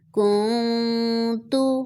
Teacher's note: یہاں پہ بھی نون ساکن ہے اور اس کے بعد تا ہے تو یہاں پر اخفا ہو گا